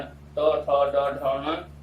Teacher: टवर्ग के 5 वर्ण ट, ठ, ड, ढ, ण और रकार और शकार, इन सभी का उच्चारण स्थान मूर्धा होता है।